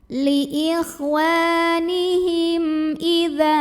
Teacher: Maka cara baca mim sukunnya adalah diizharkan atau dibaca dengan jelas. Li ikhwanihim idza, dza mad tabi'i karena ada alif yang didahului baris fathah. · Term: izhar syafawi